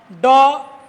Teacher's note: ड ट वर्ग के अंतर्गत आता है। इसका भी उच्चारण मूर्धा से होता है।